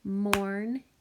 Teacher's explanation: So my syllable gets cut here. I hear that or sound in the first syllable.